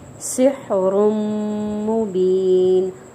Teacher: تنوین کے بعد میم مشدد ہے تو یہاں پہ غنہ کریں گے، ٹھیک ہے. سحر، ایک الف کے برابر غنہ کریں گے.